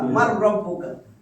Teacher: নুন সাকিনের পরে র আর লাম আসলে এটা ইদগামে বেলা গুন্না, তাসদিদ দিয়ে মিলাইয়া গুন্না ছাড়া পড়তে হবে। তো আমি তাসদিদ দিছি মিলাইয়া গুন্না ছাড়া, মার রব্বুকা।